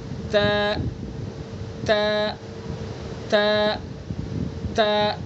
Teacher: تا کو زبان کی نوک کو ثنا علیہ کی جڑ پر لگا کر کے ادا کریں گے